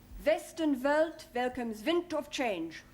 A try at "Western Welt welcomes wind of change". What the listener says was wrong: Wonderful. Very good.